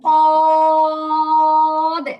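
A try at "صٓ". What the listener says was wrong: আর সদে এরকম কঠিন করে হবে না, উচ্চারণটা হালকা হবে।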